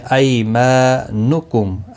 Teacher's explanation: ای یا لین ہے، تھوڑا نرمی کے ساتھ کھینچ کر ادا کریں گے۔